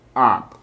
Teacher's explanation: se pronuncia como A, como arriba en el paladar, como entre una O y una A, up. Y es muy popular siempre como, casi siempre como una U.